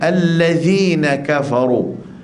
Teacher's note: Kafaru di sini pastikan ka lemut, fa lemut, ru tebal. Jangan kita bunyi fa jadi pa pula.